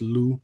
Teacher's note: So you wouldn't pronounce the P. It's just loup.